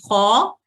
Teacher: جیسے یہاں دیکھیں خا، یعنی آپ خا کے لیے جب منہ اپنی زبان کے تالو کو اوپر، زبان کی جڑ کو تالو کی طرف اٹھاتی ہیں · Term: مفخم